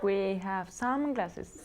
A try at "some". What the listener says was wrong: Some. Very good pronunciation. No, you said it correctly, okay? Like sun, but some.